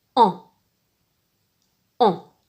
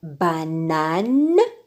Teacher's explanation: la lettre N ne se prononce pas ne mais elle forme une voyelle nasale avec l'autre voyelle qui l'accompagne